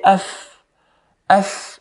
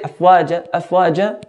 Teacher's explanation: Fa here in the word afwaja is one of the letters that air flows with it when we pronounce it. So if you put your hand in front of you and say af, af, you notice air flows with it.